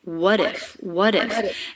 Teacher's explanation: part of the same word these two words link together so that t does come between two vowels and it is a flap t that flap t connects the two words